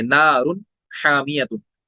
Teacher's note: हम वहां पे इजहार करेंगे, यानी नून को हम नाक से नहीं निकालेंगे। जैसे मिसाल यहाँ पे वन हर्फ है, यहाँ पे नून साकिन के बाद हा आ रहा है, तो हम नून को क्लियरिटी के साथ अदा करेंगे, इजहार करेंगे।